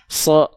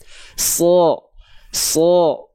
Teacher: Huruf shad ketika dia berharokat fathah, dia kan nggak dibaca sa, tapi dia dibaca so, terdengar seperti vokal O. Kenapa? Karena huruf shad termasuk ke dalam huruf yang tebal.